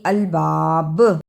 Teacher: رکنے کی صورت میں الباب، با پر قلقلہ بھی کرنا ہے